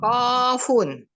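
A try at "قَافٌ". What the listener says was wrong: Nah, 2 harokat saja. Qafun.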